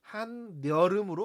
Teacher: 그러면 변동 전과 변동 후를 비교했을 때 음운의 개수가 늘어났죠? 자, 그리고 한의 받침 니은과 여름의 초성, 반모음 이 사이에 니은이 생겨났죠? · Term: 니은 첨가